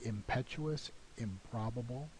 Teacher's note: the place of articulation has acquired the labial im feature because of the labial place of articulation of the following phoneme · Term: assimilation